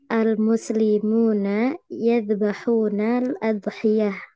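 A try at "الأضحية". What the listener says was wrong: Udhiyah di dhammah.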